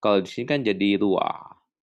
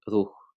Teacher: Jadi bacanya adalah, kalau di sini kan jadi ruah. Sebenarnya bacanya ruh, tapi karena dia bentuk, akhiran daripada he, het, ayin, maka dia pengen ada a-nya, jadi ruah gitu ya. Jadi seperti ini kan, bacanya itu kan ruh gitu ya, kemudian berubah menjadi ruah, begitu kurang lebih ya.